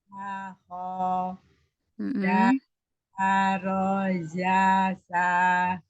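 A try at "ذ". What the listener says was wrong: Ulang dari zalnya keluarkan ujung lidah. Jangan tertukar makhraj lagi ya.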